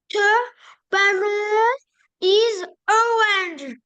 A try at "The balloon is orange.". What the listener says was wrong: Donc tu dis balloon. The balloon is orange.